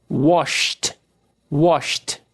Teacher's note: Wash. Não vibra. Som de CH. Washed. Washed.